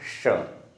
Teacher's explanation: इसमें जीवा तालू को स्पर्श करती है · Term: तालव्य